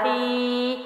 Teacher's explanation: واو مدہ، نون پیش واو نو، ہا جو ہے نیچے زیر ہے، آگے یا ساکن ہے تو یا ساکن سے پچھلے حرف کے نیچے زیر ہے تو یا مدہ ہے، ہا زیر یا ہی، ہا جو ہے وہ سینے سے وزن سے ہے